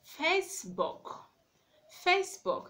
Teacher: you have to stress the word on the first syllable